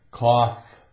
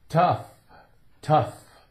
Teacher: So the F sound is not going to be a big F thing. It's soft.